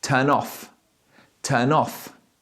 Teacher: So I am linking the end of the first word to the beginning of the second word.